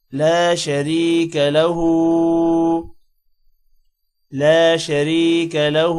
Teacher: شریک لہ را جو ہے یہ موٹا نہیں ہوگا کیونکہ را کے نیچے زیر ہے